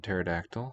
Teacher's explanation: for english it's not a permitted sequence we just drop the p